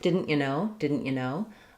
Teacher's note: And then no is our stressed word. And that's going to be what's long and clear here.